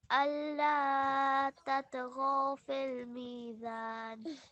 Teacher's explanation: you're prolonging the alif for 2 seconds. That's correct, but you're not prolonging the wa for 2 seconds. So alla tatghaw, so 2 seconds.